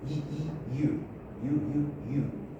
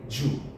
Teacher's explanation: the tongue gets very close very close to the palette but it doesn't touch if you touch you get it wrong Spanish people touch and